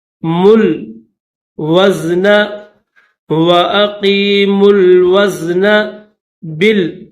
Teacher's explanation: میم کے بعد یہ جو واو ہے اس واو کو نہیں پڑھیں گے، ڈائریکٹ میم کو لام کے ساتھ ملائیں گے